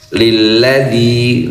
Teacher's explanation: dzinya dua ketukan mad thabi'i.